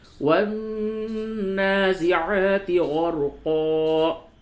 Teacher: یہ نون کے اوپر تشدید ہے، اس وجہ سے اس پہ غنہ کرتے ہیں۔ یاد رکھیں قرآن شریف میں جب بھی نون اور میم پہ تشدید ہو تو وہاں پہ غنہ کرتے ہیں۔